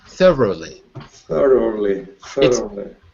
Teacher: so you have to put the r on the second syllable